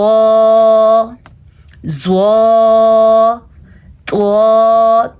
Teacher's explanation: اوپر والے سامنے کے دانتوں کے جڑ سے زبان لگتی ہے تو ادا ہوتا ہے۔ یہ بھی پر پڑھا جانے والا حرف ہے۔ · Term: زواد